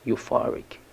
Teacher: The stress is on the second syllable, for, euphoric